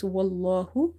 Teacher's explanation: This lam is heavy because there is a fatha before it.